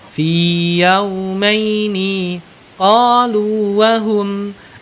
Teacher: Jadi tidak dibaca idgham, dibaca panjang aja.